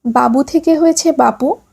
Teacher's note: ঘোষ বর্ণ অঘোষ বর্ণে পরিণত হলে তাকে বলে অঘোষী ভবন